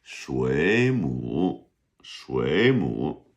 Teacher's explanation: 水母. And so the first third tone becomes a second tone.